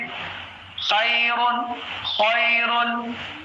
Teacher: خا جیسے خیر، تو خا جو ہے گلے کے اوپری حصے سے ادا ہوتا ہے. اب خا میں آواز جو ہے، ایک فرق میں آپ کو بتا دوں، خا جب بھی آپ ادا کریں گے، خا کی آواز ایک دم ایسے آنی چاہیے جیسے ایک کوے کی آواز آتی ہے.